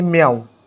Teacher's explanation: इसी तरीके से हम देखें म्याऊं, तो यहाँ पर ये अंतस्थ व्यंजन लगा हुआ है साथ में, तो म्याऊं, म्याऊं माँ में बहुत कम समय लग रहा है, मतलब आधे व्यंजन के बराबर समय लग रहा है। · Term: अर्ध व्यंजन